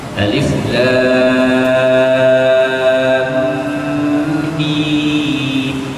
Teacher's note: Jadi mim mati bertemu dengan mim, maka hukumnya idgham. Dibaca secara idgham.